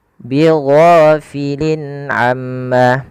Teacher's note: Ghain panjangkan 2 harakat dan dia jangan dibaca dengan go. Jangan bighafilin ya, tapi bigho.